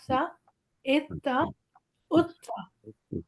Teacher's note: سا ہے جس میں ہماری زبان تھوڑی باہر نکلتی ہے